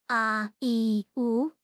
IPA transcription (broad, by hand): a i u